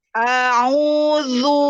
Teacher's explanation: Ya, semua sudah bagus kecuali ain yang dhammah kurang monyong dan ro kurang tebal. A'udzu sama zu itu monyongin karena dia berharokat dhammah. Kembali lagi harokat kesempurnaannya fathah membuka mulut, dhammah monyong.